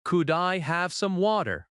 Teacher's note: One of the most useful sentences is, "Could I have some water?" Let us break that down. Could I have sounds like coo-die-have. The d connects smoothly to I.